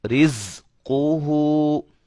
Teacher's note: سیٹی کی آواز پیدا ہوگی زا کے اندر